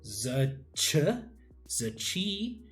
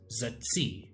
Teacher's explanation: what would be a post-alveolar sound would become alveolarized in the high dialect. So we see z ch, z chi becomes z tsi, becomes a lot.